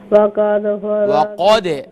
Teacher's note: दाल पर क़लक़ला करेंगे